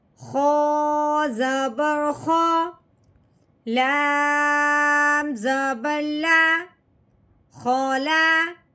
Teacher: خو کو حلق سے رگڑ کے نکالتے ہیں